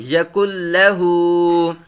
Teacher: ادغام بلا غنہ ہو رہا ہے یہاں، اس لیے جو ہے وہ نون کی آواز نہ ہونے کے برابر نظر آتی ہے یہاں